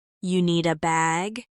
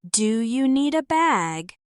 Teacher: That's short for, Do you need a bag? But the do is dropped.